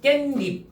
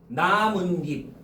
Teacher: 니은 소리가 두 번 발음된다고. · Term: 사이 소리